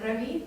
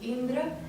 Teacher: короткий и плюс короткий и образуют долгий и. Например, Рави, короткий и Индра, это короткий и начинается.